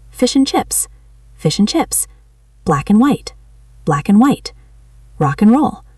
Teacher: And we almost never say the d at the end. We usually just say and or even just n.